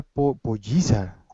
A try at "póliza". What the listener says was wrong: ¿Qué es la polliza? La polliza, you mean, polliza sounds like a chicken, a small chicken. You mean policy, bueno, la política, no sé, porque póliza is like a...